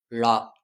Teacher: ழா தமிழ் மொழியின் சிறப்பு எழுத்து ழா. நாவின் நுனி மேல் நோக்கி வளைந்து அன்னத்தை வருடுவதால் ழகரம் தோன்றும்.